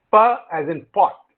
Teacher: Pa is voiceless, bilabial, stop. Now voiceless, it refers to the state of the glottis, which means the vocal cords are held wide apart.